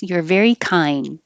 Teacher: you won't release the D you'll just hold your tongue in the D position